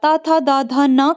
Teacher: इनका उच्चारण स्थान दंतों से किया जाता है